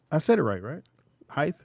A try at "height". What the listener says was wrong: No, stop putting the TH at the end. Why do you keep saying TH?